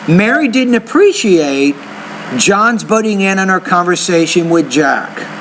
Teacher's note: you have one pause after appreciate